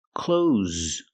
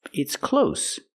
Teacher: Use the z sound with a voice, like zebra.